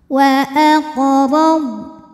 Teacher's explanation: karena huruf qf sukunnya sukun asli dan ada di tengah bacaan maka dibaca dipantulkan dengan pantulan yang kecil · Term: Qalqalah Sugra